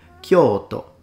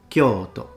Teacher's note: So the first one is long, Kyo. The second one is short, To.